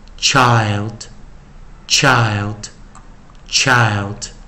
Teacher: 在 ILD 的时候我们其实是念长元而不是短元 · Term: 长元音